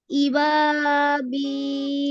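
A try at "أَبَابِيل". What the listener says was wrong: হ্যাঁ, হামদায় জবর আছে, ফিয়া দেখে শুনে পড়ো শুধু।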